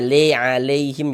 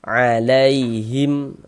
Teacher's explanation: Nah, jangan dibaca alaihim, jangan sampai condong ke huruf e ya. Nah, kita baca lunak lembut. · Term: huruf lin